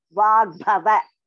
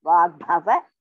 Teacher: Ga is Alpaprana. Bha is Mahaprana.